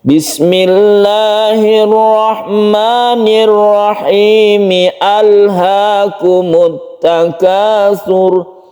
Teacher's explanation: Alhaakumut Takasur itu alnya bukan lam ta'rif, sehingga tetap dibaca meskipun disambung dari bismillah.